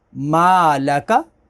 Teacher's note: अलिफ से पहले ज़बर है तो मीम को खींचेंगे, अलिफ मद्दा।